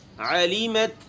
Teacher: عین گلے سے پڑھا جائے گا علیمت باریک ہے سارا.